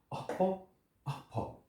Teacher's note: ये उपध्यमानीय है और इनका उच्चारण स्थान होगा ओष्ठ